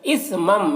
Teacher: میم ساکن کے بعد یہاں پر میم ہے تو ادغام شفوی ہوگا، اسے غنہ کے ساتھ میں پڑھنا ہے